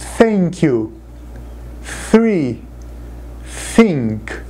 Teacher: ele é um som que não tem na língua portuguesa então vocês precisam aprender do zero mesmo colocando a língua para fora entre os dentes